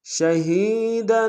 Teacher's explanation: شہی میں ہی میں یا مدہ ہے، ایک الف نار میں کھینچیں گے، دال کے اوپر تنوین غنہ کریں گے۔